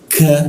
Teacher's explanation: huruf K sama posisinya di siku tenggorokan. Hanya lidahnya diturunkan sehingga rongga udara terbuka dan ada hembusan udara